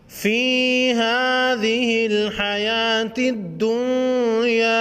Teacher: فی یا مدہ ایک الف کے مقدار کھینچ کر پڑھیں گے